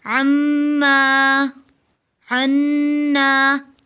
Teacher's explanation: اب عین سے پڑھیں گے، اوپر اما تھا حمزہ سے اور نیچے عین سے عما، عنا۔ دوبارہ میم مشدد اور نون مشدد پہ غنہ ہوگا